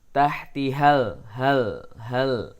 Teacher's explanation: ujung lidah bertemu dengan antara gigi dengan gusi · lamnya tidak boleh atau jangan sampai terpantul. Letakkan lidah, ya, pada makhraj lam.